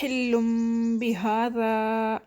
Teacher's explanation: اب حلم میں لام کے اوپر تنوین ہے تو اس کے نیکسٹ میں با لیٹر آ رہا ہے تو ہم لام کی تنوین کو میم میں بدل رہے ہیں